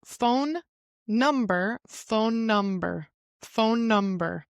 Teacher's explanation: we are not repeating or putting like a strong uh space in between those two words because it has the same sound.